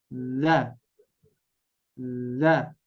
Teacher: ujung lidah kita nempel ke menyentuh gigi seri atas